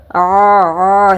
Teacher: குரல் வலை மூடிய மொத்தமா நீங்க ஃபுல்லா கேப்பே இல்லாம தொண்டையோட சுவரை நோக்கி நீங்க தள்ளிட்டீங்க அப்படின்னா ஐனோட சவுண்டு உங்களுக்கு ரொம்ப ஹெவியா கேட்கும்